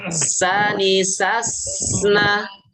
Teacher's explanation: Sani sasna terputus. Harus karena dia sin ini punya sifat rokhawah, maka suaranya dialirkan.